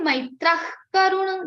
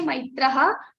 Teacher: Don't say maitraha, but we say maitrah. Ka sound is coming in the place of visarga. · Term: jivva mulya sound